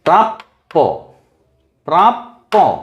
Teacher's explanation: পকে ছোট করে উচ্চারণ করে তারপরে বড় করে উচ্চারণ করব।